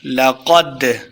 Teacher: دال کو ہم نے ہلا کے پڑھا ہے، واضح کیا ہے، اسی کو قلقلہ کہتے ہیں